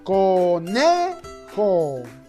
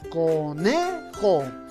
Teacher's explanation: ¿Por qué? Porque la mayor fuerza de voz está en la penúltima sílaba